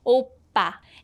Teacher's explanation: And if you look at the second syllable, this is a double consonant, so it's a strong PP sound